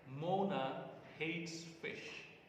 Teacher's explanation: fish is the last accented syllable in this sentence right so it receives the tone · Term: nucleus